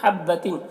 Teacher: تین میں اخفا ہو رہا، تنوین کے آواز کو ناک میں چھپا کر پڑھیں گے۔